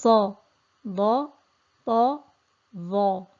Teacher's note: these letters are thick letters, they're elevated letters, and they also have a trapping of sound between the tongue and the palate, which increases in their thickness and the elevation of the sound.